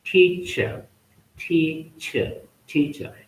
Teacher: In British English, R towards the end is not pronounced